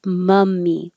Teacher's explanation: So the vowel here in 27 is m, low in the middle, pulled back, mummy.